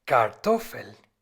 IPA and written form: kaʁˈtɔfəl (Kartoffel)